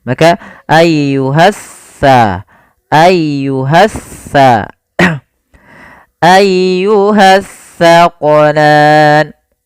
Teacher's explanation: Alif lam yang dia tertulis tapi tidak dibaca lamnya. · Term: alif lam syamsiyah